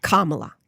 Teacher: Heavy pronunciation on the first syllable.